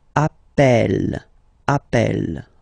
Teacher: You tend to pronounce it like a, really open. That's the reason why you pronounce it appel, appel, okay?